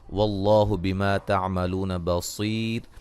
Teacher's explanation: لفظ اللہ کو موٹا ادا کریں گے ، اس سے پہلے حرف پر